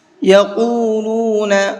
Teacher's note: قاف کو پر کر کے پڑھیں گے